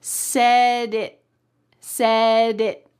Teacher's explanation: The word it, the T is going to be stopped at the top of your mouth. I like to call this a stopped T because your mouth is making the shape of a T, but there's no air that's coming out. It's just stopped right in the middle of your mouth.